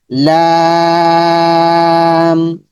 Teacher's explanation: পড়তে হবে। যেহেতু উপরে জবর পেশ কোন কিছু নাই। লাম এখানে লামটা লম্বা হবে শুধু লাম উচ্চারণ হবে কিন্তু লম্বা করে উচ্চারণ করতে হবে